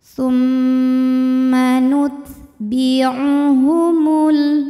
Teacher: Thumma, mimnya dihukumi dengan gunnah musyaddadah karena mim bertasydid. Cara membacanya didengungkan, bunyi M tahan sampai ada suara masuk hidung kurang lebih 2 harokat.